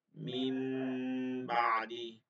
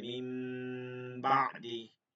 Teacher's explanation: নুন সাকিন বা তানবিনের বামে, নুন সাকিন বা তানবিনের বামে ইকলাবের বা আসলে নুন সাকিন বা তানবিনকে গুণনা সহিত মিলিয়ে পড়তে হয়। গুণনা সহিত মিম দ্বারা পরিবর্তন করে পড়তে হয়।